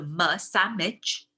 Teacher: people often also just make it into a nasal sound, which is the m, which is the labiodental nasal, so m, sandwich, right?